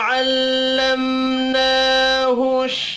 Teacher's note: मीम साकिन के बाद नून है, इजहार शफ़ी होगा, गुन्ना नहीं होगा